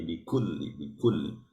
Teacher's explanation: pengucapan huruf kafnya agak dimajukan sedikit dari pangkal tenggorokan. Masih terkesan qaf ya.